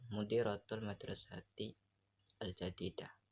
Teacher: Terdapat jeda di antara kalimat mudiratul madrasati dan al-jadidah.